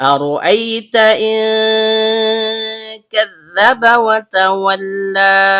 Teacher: Dimulai dengan hamzah dalam bentuk alif atau hamzah qat' yang berasal dari tenggorokan bagian bawah. Bunyi 'Ra' dihasilkan dengan ujung lidah menyentuh bagian belakang langit-langit mulut. · Ro, ujung lidah bertemu dengan langit-langit bagian belakang. Karena ro-nya berharokat fathah, maka hukum bacaannya tebal atau tabkhim.